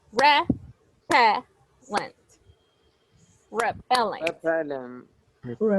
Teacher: The stress goes in the second syllable. It has three.